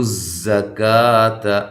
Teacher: تو زکات تا کو باریک، زا کو زور سے سیٹی کے ساتھ، کا باریک اور الف مدہ کے قائم مقام ہے.